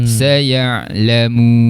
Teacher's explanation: Hujung lidah angkat sentuh pada langit, itu makhraj huruf nun.